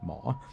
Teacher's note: So, and the Thai word for doctor is mo. So that's mo with like a rising tone